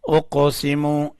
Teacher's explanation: اس قاف کے اوپر کلکلہ کرنا ہے، یعنی قاف کو اٹھانا ہے